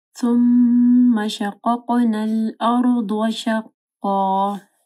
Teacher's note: ثم فا کے مخرج کا خیال رکھنا ہے، میم مشدد ہے، غنہ ہوگا